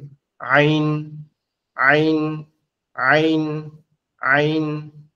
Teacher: আইন হরফের উচ্চারণ হচ্ছে আমাদের এই যে কন্ঠনালীর মাঝ বরাবর